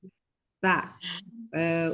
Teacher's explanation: Ujung lidah menyentuh gusi bagian atas atau tempat tumbuh gigi. Tumbuhnya gigi seri atas. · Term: Huruf ta